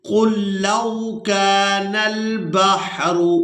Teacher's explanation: پہلا لام ساکن ہے اور دوسرا لام مشدد ہے، تو ہم نے قاف کو لام مشدد کے ساتھ ملانا ہے، لام ساکن کو چھوڑ دیں گے